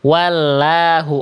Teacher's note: Yang B salah karena lamnya dibaca tipis. Buktinya apa? Kedengarannya vokal A. Ya, wallahu, harusnya wallahu.